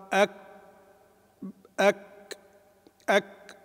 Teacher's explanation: الأول نحبس ثم بعد ذلك نطلق الصوت بالهمس، ويكون الهمس يكون معتدلا. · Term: الشدة